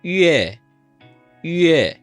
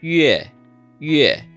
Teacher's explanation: We're not saying yue, we're saying yue. It's a pure short E as spoken in America with that little U before it.